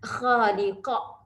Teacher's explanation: Matikan huruf akhir, huruf qaf tu lahirlah sifat qalqalahnya. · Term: qalqalah kubra